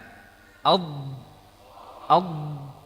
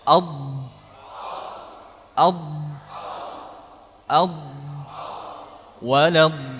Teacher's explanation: jadi huruf dhad dari sisi lidah kita tekan ke dinding geraham atas